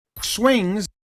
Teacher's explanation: here's a speaker who doesn't have an S there. Instead, they have a swings, an esh, the sh.